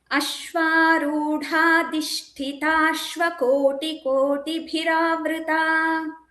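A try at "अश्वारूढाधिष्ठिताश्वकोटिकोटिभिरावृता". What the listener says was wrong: Bhagini, you missed dhi.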